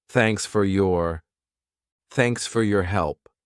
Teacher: At a natural pace. Native speakers, we reduce sound. So for becomes fur, thanks fur, your becomes your.